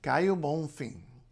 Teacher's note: The O is U. And N and M at the ends of syllables in any kind of Portuguese become a nasalization